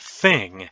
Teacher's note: you'll notice that you're putting your tongue between your teeth that's an interdental sound